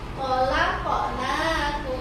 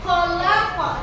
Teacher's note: Qalqalah kecil itu adalah pantulannya itu yang kecil. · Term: qalqalah sughra